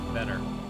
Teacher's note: A lot of Canadians will pronounce the T's, but sometimes it's pronounced better, like as though it's a D. And Standard American, from what they teach us, it's pronounced better in Standard American as opposed to better in Canadian.